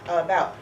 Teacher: You can even clap that second syllable. That's where it gets a stress. The first one doesn't. That would be schwa.